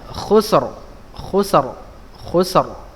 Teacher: Contohnya khusr ya, ini langsung ya, ra-nya tebal